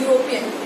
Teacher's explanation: The sound is not E which is coming, but the sound is year. And year is not a vowel, it is a consonant.